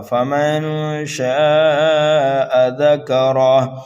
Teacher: نون ساکن کے بعد شین حروف اکفا میں سے آ رہا ہے اس لیے یہاں پر اکفا ہوگا۔ فمن شاء ذکرہ، الف مدہ کے بعد حمزہ اسی کلمے میں آنے کی وجہ سے یہاں پر جو مد ہو رہا ہے وہ مد متصل ہو رہا ہے۔